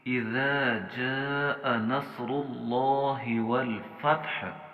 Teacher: صاد موٹا پڑھنا ہے، اور را کو اس وقت ہم نے موٹا پڑھنا ہے چونکہ اس کے اوپر اپنی حرکت موجود ہے · لفظ اللہ یہاں پر موٹا پڑھا جائے گا